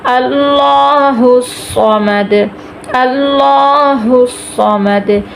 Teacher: اللہ الصمد، صوت کو ہم نے پر کرنا، ہر حالت میں اس کو پر کرنا، چاہے اس کے نیچے زیر ہو، پیش ہو، زبر ہو، صوت ہمیشہ موٹا پڑا جائے گا